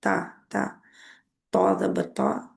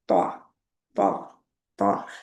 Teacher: तौ तौ तौ, पीछे से आपका मुंह आगे से नहीं गोल होगा, सिर्फ पीछे से ज़बान की जड़ उठेगी तो ता बन जाएगा। जबान की नोक जो है आगे, ऊपर के दो दांतों के पीछे जो मसूड़े हैं उनके जो उभरा हुआ हिस्सा है दानेदार, उसके ऊपर लगेगी, जड़ के ऊपर। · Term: ता मोटा